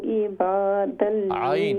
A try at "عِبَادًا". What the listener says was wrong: عین کو درست کریں،